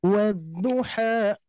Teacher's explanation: Nah jangan sampai kita memberikan bunyi hamzah di ujungnya ya. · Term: mad panjang 2 harokat